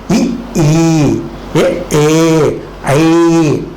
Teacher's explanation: இ ஈ ஏ ஐ என்பது வாயை திறக்கிற முயற்சியோடு நாக்கின் அடி ஓரமானது மேல்வாய் பல்லை பொருந்துவதாலே பிறக்கிறது